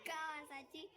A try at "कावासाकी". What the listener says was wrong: कावा साची साची नाही रे साकी